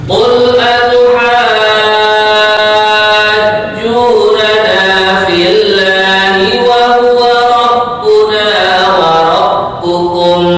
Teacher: Di sini pada kalimat atuhaj, nah, dibaca panjang 6 harokat. Inilah mat yang paling panjang dalam hafaz itu.